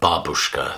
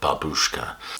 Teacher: The stress is on the first syllable rather than babushka.